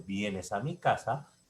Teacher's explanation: En el primero, vienes a mi casa, se le llama inflexión tonal descendente.